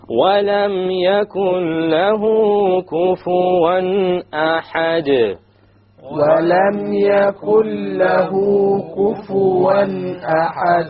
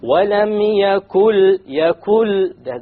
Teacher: So we drop the noon and we connect what is before it, which is the kaf, to with what is after it, and that is the noon, the lam. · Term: idgham